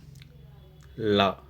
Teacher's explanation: அன்னத்தின் நடுப்பகுதியை தொடுறதால லகரம் தோன்றுகிறது